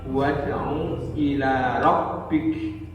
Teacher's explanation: huruf qalqalah sugro pada ayat wad'u ila rabbik, yakni dal yang disukun